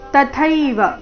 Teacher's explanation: ತ ಅಲ್ಪಪ್ರಾಣ ಮುಂದೆ ಥೈ ಮಹಾಪ್ರಾಣ ದೀರ್ಘ